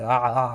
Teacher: that that that that the name Arisa in Arabic starts with the letter Ein which is this guttural sound from like the throat it's the it's like ah sound it's kind of hard to